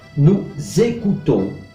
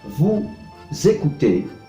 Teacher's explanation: lleva a una liaison, una conexión entre la S del pronombre de la primera persona del plural y de la segunda persona del plural y el verbo que empieza con vocal